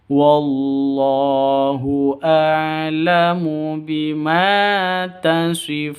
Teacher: funnya panjang, boleh 2, boleh 4, boleh 6 ketukan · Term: mad arid lis sukun